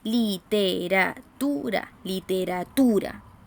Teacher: la palabra literatura y literatura literatura la sílaba tónica está bien no está en la última sílaba sino que está en la penúltima